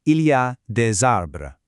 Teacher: Notice the Z sound linking the words here.